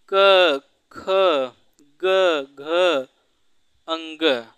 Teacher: कंठ वर्ण इसलिए कहते हैं, इनका उच्चारण कंठ से होता है